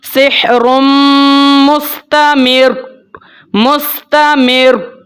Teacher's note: تو را کے اوپر جب آپ نے وقف کرنا ہے، را کو پہلے ساکن کرنا ہے، پھر را کے اوپر مضبوطی کے ساتھ آپ نے وقف کرنا ہے · را کو آپ نے خوب مضبوطی کے ساتھ اس کے اوپر آپ نے وقف کرنا ہوتا ہے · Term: تشدید